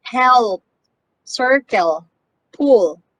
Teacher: the velar l is also called the dark l sound